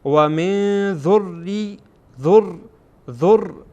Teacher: مسلمین لك و من اینجا هم نون میبینین که ساکن هست، بعد از نون ذال آمده و ذال از حروف اخفا هست، اخفا میشه